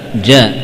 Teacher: Jim, ya, bagian tengah lidah nempel ke langit-langit, ya, menempel dengan apa, dengan kuat.